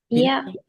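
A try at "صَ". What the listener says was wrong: யா அல்ல. சயா அல்ல.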